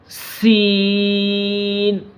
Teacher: یہ سین جو لفظ ہے اس کے اندر سیٹی کی آواز آنی چاہیے